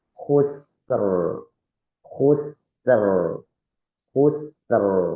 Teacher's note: ro sukun, huruf sebelumnya sukun dan huruf sebelumnya fathah, maka dibaca tebal